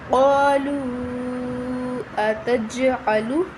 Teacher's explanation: جیم ساکن پہ قلقلہ ہوگا